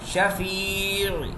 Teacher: شین بھی باریک ہے, فا باریک ہے, یا باریک ہے اور آئین بھی باریک پڑھا جاتا ہے · الف مدہ اور یہاں پر یا مدہ. یا مدہ کو بھی ہم 2 سیکنڈ کھینچ کے پڑھیں گے